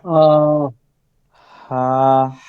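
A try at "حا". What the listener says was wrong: হা। এই যে হ বলতেছেন কেন? হ আকার দিয়ে হা।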